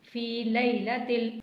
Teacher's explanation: فی کو تھوڑا سا کھینچنا ہے